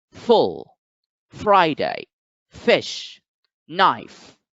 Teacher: known as a fricative the first fricative given is this is produced by putting your top teeth close to the bottom lip and this sound is unvoiced which means that you don't have to strain your vocal chords just pass air